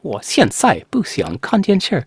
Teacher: It's got a lot of those fourth tone, the falling tones.